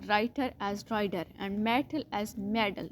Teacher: In American English if टा occurs between वॉल्स इट is pronounced एज डी, यानी डी वाली sound.